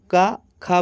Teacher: का खा बोलने बोलने पर समझ में आ रहा है कि ध्वनि कंठ से हमारे लगकर निकल रही है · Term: कंठ ध्वनियां